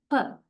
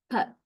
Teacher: at the lips, we block the airstream because we tightly touch our upper lip and lower lip. When we say per, we tightly touch, then the airstream is blocked, but we do not like touch both lips forever.